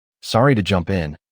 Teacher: I'm starting to see how the rising intonation on jump in makes it sound polite.